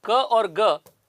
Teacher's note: क और ग का जो साउंड है, इन दोनों को वेलर प्लोजिव्स कहते हैं